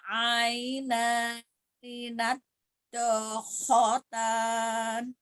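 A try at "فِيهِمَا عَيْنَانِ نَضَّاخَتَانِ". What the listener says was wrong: Ya, ni-nya juga pendek, terbaca harus dibaca pendek ya. Jadi ni-nya dia pendek langsung disambung ke na ya. Na gitu langsung ya. Jadi ni-nya tidak diayun. Tasdid huruf dodnya nadkhotan. Fihima fi-nya juga sama dua ya, itu mat tabii juga ya, mat asli juga. Fihima sama ngayunnya sekali aja.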